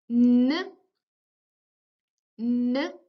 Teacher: It is a voiced, alveolar, and nasal sound. · Voiced because there is a vibration, alveolar again because we use the tip of the tongue that goes towards the alveolar ridge, and nasal because it is articulated in the nasal cavity instead of the oral